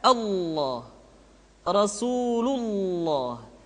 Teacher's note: lam yang terdapat pada lafzul jalalah tersebut mesti ditebalkan